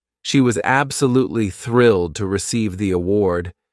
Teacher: some words are stressed, thrilled, award, while others are spoken quickly.